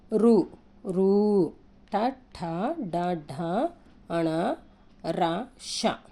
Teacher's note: మూర్ధన్యాలు అని అంటే ఏంటిది తల నుండి పుట్టి అంగిలి సాయంతో పలికేవి